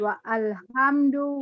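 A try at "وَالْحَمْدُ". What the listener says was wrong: bukan wa'al. A-nya nggak ada barisnya. Wal. Hamzah wasol. Walhamdu walhamd.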